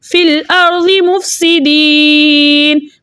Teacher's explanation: یا مدہ کو دو حرکت کی مقدار کھینچ کر پڑھتے ہیں, لیکن آگے نون کا سکون عارضی وقف کی صورت میں آ رہا ہے, اس لیے یہاں پہ مد بنے گی مد عارض وقفی, جس کی مقدار 2 4 6 حرکت ہے, لیکن 6 حرکت کی مقدار کھینچ کر پڑھنا زیادہ بہتر ہے